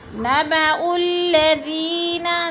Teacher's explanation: नबउल्लज़ीना, ज़ी पे या मद्दा है, या साकिन से पहले दाल के नीचे ज़ेर है तो या मद्दा। یا مدہ کو ایک الف دو حرکات کے برابر کھینچ کر پڑھنا ہے